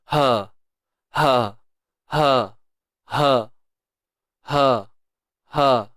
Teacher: H biasa yang kita sebut H simpul itu datangnya daripada pangkal kerongkong tuan-puan